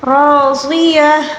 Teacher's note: گول تا کو گول ہا کے ساتھ تبدیل کر کے پڑھنا ہوگا